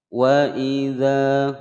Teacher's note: wa pendek, i pendek, za panjang dua ketukan